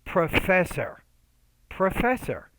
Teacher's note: the stress is on the second syllable so you want to make that syllable clearer louder longer and higher pitched